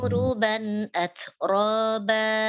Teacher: Langsung auruban ya, ainnya tidak terlalu bawah ya. Ain itu dari tenggorokan bagian tengah, bukan huruf tebal